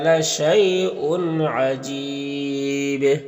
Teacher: لشی، لشی میں یا لین سے نرم آواز کے ساتھ جد پڑھیں گے، اور یہاں پر حمزہ میں دو پیش کی تنوین ہے، اس کے بعد عین ہے حروف حلقی میں سے، تو یہاں پر اظہار حقیقی ہوگا۔ اور عجیب یہاں پر وقف کریں گے تو با میں قلقلہ ہوگا اور مد عارض وقفی ہوگا، تو اس طرح سے پڑھیں گے۔